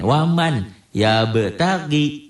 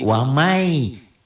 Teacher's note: waman w a m a n waman yabtagi dibacanya menjadi wamai Bunyi n-nya melebur pada y